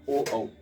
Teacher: इनका जो उच्चारण स्थान है वो क्या है, तो कंठोष्ठ है। ओ और औ का उच्चारण स्थान कंठ और ओष्ठ, यानी कंठ और ओष्ठ दोनों से बोला जाएगा